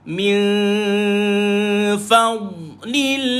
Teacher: Nun qasar di fa, lebar mulut sambil tu kita punya gigi atas menyentuh perut bibir bawah.